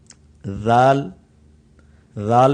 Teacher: اپنی زبان کا کونا آپ نے دانتوں کے بالکل کناروں پر لگانا ہے تو بالکل سافٹ اس کی آواز نکلتی ہے